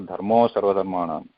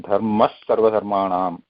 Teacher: That visarga changes to sa because after that there is a sa which is a karkasha vyanjanam.